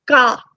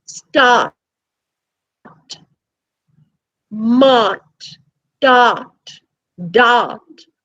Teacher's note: pronounced it's just the r sound the r is elongated now when we speak of ah we say that it is a back vowel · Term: long ah